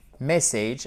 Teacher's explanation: Mais maintenant que je vous l'ai dit, short message, message avec un accent tonique sur la première syllabe